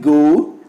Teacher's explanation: The lips are neutral in the beginning but are rounded towards the end. O is a glide from central position moving towards U. The lips are neutral at the beginning but are rounded at the end. · The glide from this diphthong begins at a central position between half close and half open and moves in the direction of RP U.